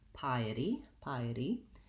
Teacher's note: It's between 2 vowel sounds, and oftentimes in American English we make those into more of a light D sound, flap T.